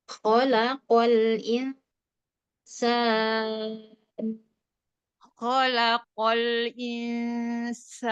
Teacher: Untuk lam hati-hati jangan ikut tebal, tetap tipis.